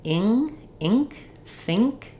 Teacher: it is the I vow it should be a LAX vowel it's just maybe a little bit higher more nasal because my back of my tongue is lifting getting ready for the ing